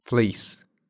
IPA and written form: flɪis (fleece)